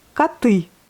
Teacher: коты, vous voyez, on prononce A, mais on écrit un O.